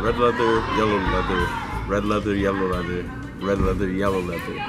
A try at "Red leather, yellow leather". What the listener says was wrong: Okay, but you can't take that pause.